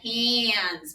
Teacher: Because A and N go together and we get a nasal whiny sound.